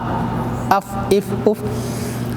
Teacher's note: ऊपर के दांतों को किनारा नीचे के होंठ से मिलकर फा